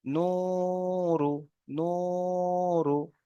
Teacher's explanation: নু বলে একালিপ পরিমাণ টানবো, কিন্তু র পেশ রু এখানে টান হবে না, তার কারণ হলো রটা হলো হারাকাত, ঠিক আছে। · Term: ওয়াও মাদ্দা